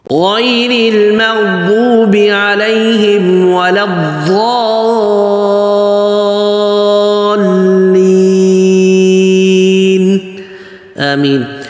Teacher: آگے ولد کا جو لام ہے نا اس کو پتلا بولنا ہے ولز نہیں اور ولد بھی نہیں. · لین سی آواز نہیں ہو اور لین بناؤ. لین کھینچنے کے بعد پھر آگے جو ہے نون بھی واضح کرنا ہے